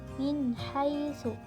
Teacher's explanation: Di situ terdapat hukum tajwid izhar juga karena nun sukun bertemu dengan huruf ha, maka dibaca jelas.